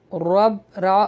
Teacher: را جو ہے وہ موٹا پڑھا جائے گا کیونکہ اس کے اوپر زبر ہے